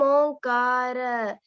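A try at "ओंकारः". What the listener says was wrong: Visargam irukku. Onkaraha.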